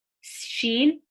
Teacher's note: Sheen is from the middle of the tongue, raising up.